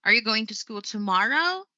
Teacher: I have applied the rise the rise of my voice was done at the end of the sentence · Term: rising intonation